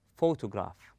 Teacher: We stress on pho. We place a strength or force on the first syllable and we go easy on the rest of the word. We say photograph.